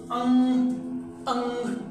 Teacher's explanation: इसे बोलने में हमारे नाक से, मुंह से, दोनों से हवा निकलेगी। बोल के देखो, अंग अंग, दोनों से हवा निकलेगी।